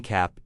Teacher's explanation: The a in cap is the short a sound, often called the cat sound. The jaw drops quite far and it's a very open sound.